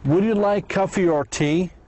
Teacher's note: And or almost is not pronounced.